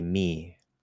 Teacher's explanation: there's a little bit of nasalization nowhere near what you should be using if you're a Portuguese speaker a French speaker or some other